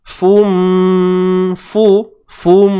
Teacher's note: Asalnya fun, tapi dah adanya idgham, unsur idgham masuk. Fun jadi fum masuk secara sempurna. Bi gunnah dengan dengung dua harakat kadarnya. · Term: idgham bi gunnah